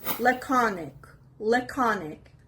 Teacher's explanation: The stress is on the second syllable, laconic.